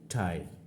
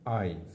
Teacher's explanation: এই আই সাউন্ডটা হচ্ছে একটি ডিপথং, কারণ এখানে আ অ্যান্ড ই সাউন্ডের সমন্বয় রয়েছে